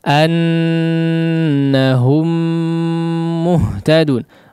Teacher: Ini juga sudah kita bahas ya, annahum muhtadun. Hum ya, mim yang pertama kemudian masuk langsung kepada mim yang kedua. Jadi tidak diizharkan ya, tidak terjadi annahum muhtadun, la ya, tidak seperti itu, tapi diidghamkan langsung masuk kepada mim yang kedua yang seolah menjadi mim yang bertasydid ya.